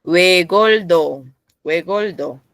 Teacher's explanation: Cuando tengo L en bapchin, el sonido de L y después me sigue la T, se pronuncia como una d normal.